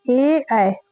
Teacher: कंठ और तालु दोनों से बोले जाता है, कंठ से और तालु से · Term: कंठ तालु